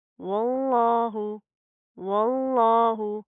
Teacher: इस वाव को हम डायरेक्ट इस लाम के साथ प्लस करेंगे, ये अलिफ लाम स्किप होएंगे